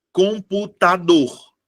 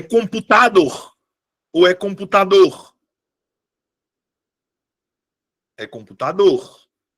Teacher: Ou não é a penúltima, perdão. A minha sílaba tônica é a última.